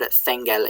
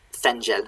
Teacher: Or thengel, sorry, I forgot to palatalize that G.